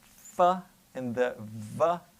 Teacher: notice how that includes your lip and your teeth